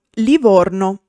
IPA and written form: liˈvorno (Livorno)